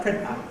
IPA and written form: ˈprɪnʔə (printer)